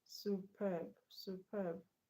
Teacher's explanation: So the stress is not on you, it's not on su, it's on perb